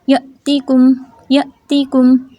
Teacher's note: پڑھتے پڑھتے ہم نے یا کو لمبا نہیں کرنا، سانس اور آواز کو روک دیں گے، یعنی کہ جھٹکا سا